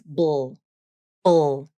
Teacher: Just a B consonant and a dark L.